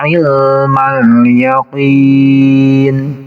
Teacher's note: Jadi alif lamnya harus terbaca. Yakin ki dibaca panjang bisa sampai 6 harokat karena ini menjadi mad arid li sukun kalau kita dibaca waqaf di sini.